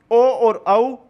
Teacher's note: कंठोष्ठ से, कंठ और ओष्ठ से ओ और औ